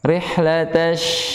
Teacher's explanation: Bunyi tafasinya deras. Udara yang keluarnya deras. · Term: sifat tafasi